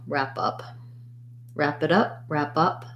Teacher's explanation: the a is a black cat vowel rap is like cat and then up is a schwa